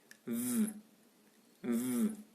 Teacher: Orale, fricative, labiodental, sonore.